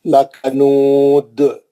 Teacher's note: جی تو یہ لکنود پہ کیا کرا انہیں، دال پہ دو پیش تھے ہٹا کے جزم لگایا آیت کے ختم پہ روکنے کے لیے، ساکن کرا. جیسے ہی ساکن ہوا دال خلخلا کرا